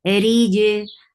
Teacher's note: Ra is light because there is kasra on it, and attached jim will get sifa of qalqala.